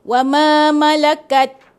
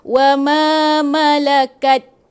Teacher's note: Tapi sebab dia tak cukup, dia tak cukup, sifat huruf ta tu tak cukup, hamas tu tak bunyi, jadi dia baca wa ma malakat.